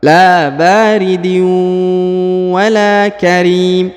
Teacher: Huruf la dipanjangkan lagi 2 harokat karena di depannya terdapat alif